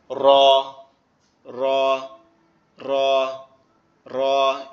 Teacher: রটা হচ্ছে আমাদের জিহ্বার আগার উল্টা পিঠ উপরের তালুর সঙ্গে লাগবে, লেগে একটু কম্পন দিয়ে উচ্চারিত হবে